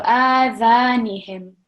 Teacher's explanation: So just like here, we have the vertical fatha on the alif. Here too, because alif is also a letter of prolongation, we are going to read it for 2 seconds. So this alif and this alif should be equal.